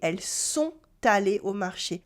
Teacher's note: Here I do la liaison between sont and aller.